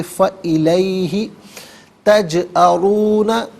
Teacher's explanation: تجأرون میں را پر پیش را کو پر کر کے پڑھیں گے